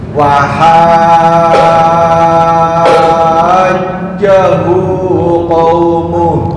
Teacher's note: Jim nanjak tengah lidah ke atas. Kurang tebal.